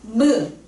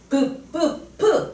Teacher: 입술. 입술에서 방해를 받고 입술에서 나는 소리, 입술 모양을 본땄어. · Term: 입술 소리